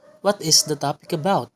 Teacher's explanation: since it is a question, it rises at the end. So now, the last term is stressed and the first syllable plays the higher pitch.